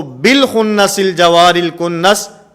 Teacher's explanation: حمزہ وصلی درمیانے کلام میں آیا ہے تو درمیانے کلام میں آنے کی وجہ سے یہاں پر حمزہ وصلی نہیں پڑھا جائے گا